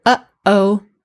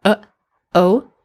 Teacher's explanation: we end each of those parts, uh-oh, by clenching our throat to stop the sound, especially in the before we say the o. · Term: glottal stop